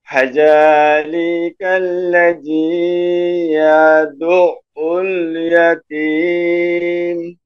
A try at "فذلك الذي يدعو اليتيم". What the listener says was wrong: মানে আপনার জাস্ট এমন হচ্ছে ইয়াদু, কিন্তু আইনটা ওই যে আইনে একটা বাঁক আছে, একটা মানে এক কথায় উচ্চারণে গলাটা চেপে উচ্চারণ করতে হয়, এটা হচ্ছে ইয়াদুল। ইয়াদু এটা ঠিক আছে, তাই না, এই জায়গায় আইনটা এই যা ইয়াদু, আমি কি করতেছি আওয়াজটাকে হালকা একটু মনে হচ্ছে বাঁক মতো, তাই না। ইয়াদু, গলাটা চেপে উচ্চারণ করলে এমন শোনা যাবে।